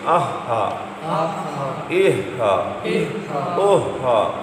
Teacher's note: گول ہا حلق کے نیچے سے